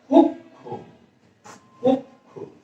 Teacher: এই খ এর সাথে একটা ও ধ্বনি যুক্ত হয়েছে অদৃশ্যভাবে